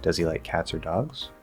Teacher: if i rise at the end and i say does he like cats or dogs now it's a yes or no question